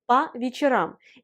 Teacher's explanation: Parce que après la préposition по, dans les phrases, elle se prononce pas parce que la voyelle O est atone, c'est-à-dire elle n'a pas d'accent tonique, et la voyelle O sans accent tonique, on la prononce A